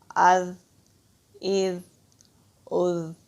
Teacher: آگے زا ہے، زال اور زا میں فرق ہے۔ زال کو جب ہم ادا کرتے ہیں ہماری زبان کی ٹپ اوپر والے سامنے کے جو دانت ہیں دو، وہاں پر ٹچ ہوتی ہے